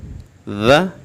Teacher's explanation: بیٹے اس میں سیٹی پیدا نہیں کرنی، زال ایسے نہیں کہنا، اپنی زبان کی نوک کو اوپر جو سامنے بڑے دانت ہیں اوپر والے، ہم نے ان کے ساتھ لگانا ہے۔